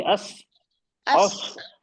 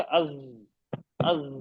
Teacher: सीन और सौद में सीडी जैसी आवाज आती है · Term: विस्लिंग साउंड